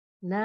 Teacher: Huruf nun saat berharokat fathah gunahnya paling tipis ya, gunahnya paling tidak sempurna, ada gunah tapi tipis sekali, apalagi setelah bertemu mat gunahnya hilang, jadi tinggal a nya ya.